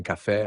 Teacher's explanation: Em casa, por exemplo, a sílaba K é tônica. Em café, a sílaba tônica é fé.